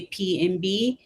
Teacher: All the muscles are in the same place except for the vocal cords. For B, the vocal cords vibrate, and for P, they don't. If you say P and B and touch your neck, you can feel.